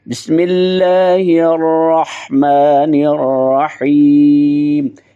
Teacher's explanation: پڑھیں گے۔ بسم اللہ الرحمن الرحیم، ہا کو ادا کریں گے، آگے الرحیم ہا اس کو ادا کریں گے حلق سے